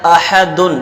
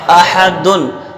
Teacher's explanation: تو حمزہ پر زبر ہے اور حمزہ کو بغیر کھینچے پڑھیں گے اور تحقیق سے پڑھیں گے۔ ہا پر زبر ہے تو ہا کو بغیر کھینچے پڑھیں گے اور ہا کا مخرج درمیان حلق ہے